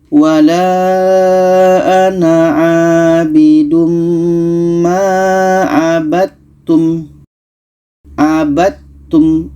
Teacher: Dal ini ada qalqalah, sedangkan ta ini bukan qalqalah sifatnya. Maka dal yang asalnya hukum qalqalah tidak jadi kita masukkan ke ta. · Kita baca wala ana abidum ma abattum. Dal kita masukkan ke ta, tidak jadi qalqalahnya. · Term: Dal bertemu ta